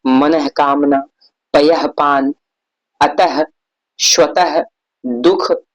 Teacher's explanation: विसर्ग जो है यह भी अनुस्वार की तरह स्वर के बाद आता है, यह व्यंजन और इसका उच्चारण ह की तरह होता है